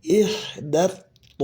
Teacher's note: th di sini tebal dan panjang ya